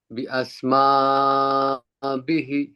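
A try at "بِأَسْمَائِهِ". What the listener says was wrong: বিহি না ইহি বিআসমাইহি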